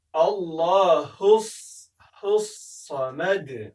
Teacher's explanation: په صاد به زوره ولې ډک به ادا کوئ